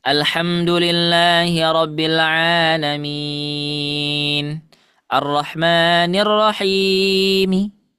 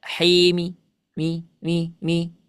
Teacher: Jadi dia ingin membaca mi cuma tidak sempurna, hanya 1/4 harokat saja. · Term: ar-raum